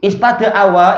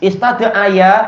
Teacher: ist Awa ini masih agak berat di bibir kita ist Aya ini masih agak berat di antara Gigi atas dan Gigi bawah